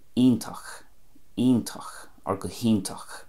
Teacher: In Connemara it would be iontach, iontach, or gohíntach. You can hear the E there coming out quite loudly, and it still keeps the ach, ACH at the end.